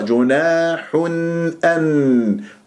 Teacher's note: تنوين ضم جاء بعدها همزة أن، يعني إظهار، يعني أسمع النون